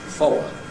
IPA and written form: ˈfɒɫəʊ (follow)